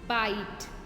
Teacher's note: इसमें हम ना लॉन्ग वॉवल साउंड पढ़ेंगे आई की लॉन्ग वॉवल साउंड में क्या होता है, आपको ना आई शब्द का जो आय होता है इसका उच्चारण अ को देर तक बोलते हैं, ई को जल्दी बोलते हैं।